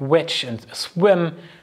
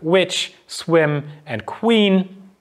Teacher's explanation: the lips are coming together but on the other hand you also have velar articulation so this has a double articulation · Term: labial velar approximant